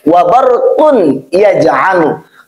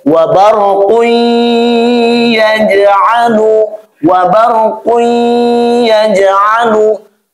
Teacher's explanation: Kemudian kita terapkan dengan memakai sistem ilmu tajwid menjadi wabarqui, tanwinnya batal, kita masukkan kepada bunyi huruf ya, lalu kita memakai ghunnah atau ditahan bunyinya, maka menjadi wabarqui yaj'alu, wabarqui yaj'alu.